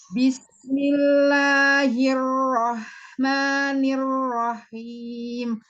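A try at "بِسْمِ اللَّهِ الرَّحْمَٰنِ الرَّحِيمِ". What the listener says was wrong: Haknya kenapa gitu? Coba ambil makhrajnya di ha. Bismillahirrahmanirrahim. Nah, di tengah aja. Bismillahirrahmanirrahim. Jangan diangkat ketika la, ma gitu.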